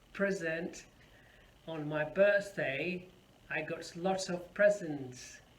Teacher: you see the stresses on the first syllable